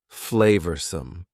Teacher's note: Notice the pronunciation. Two schwa sounds there.